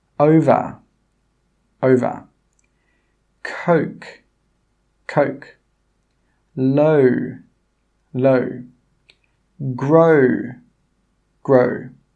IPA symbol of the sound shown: əʊ